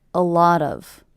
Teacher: I hear these 3 words as one unit. A lot of, with the stress happening on the middle word.